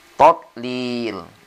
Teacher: Ini do mati atau sukun, tidak boleh qalqala karena dia bukan huruf qalqala. Jadi berhenti sejenak tapi tidak ngambil napas, ya.